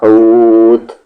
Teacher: ہا کے ساتھ ہو، کھینچتے ہوئے تا ملا دیں گے، حوت، اگر رک رہے ہیں تب کھینچتے ہوئے تا ملائیں گے